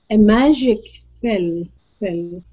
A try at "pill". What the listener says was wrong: Pill. Now your vowel sound is a mixture between a short E and a short I. Pill. Pill. Okay, you want to say pill. Pill. Pill. Pill. It's a short I sound. Pill.